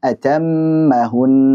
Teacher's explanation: mim tasydid dan nun tasydid ini mau dalam kondisi wasal maupun waqaf kita panjangkan gunnahnya